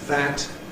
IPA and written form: ðæt (that)